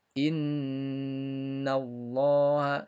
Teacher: yakni setiap Nun dan mim yang bertasydid maka hukumnya adalah guna biar selalu didengungkan tahan dua harokat